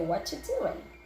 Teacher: In other parts of the United States, they actually say doing without the G sound at the end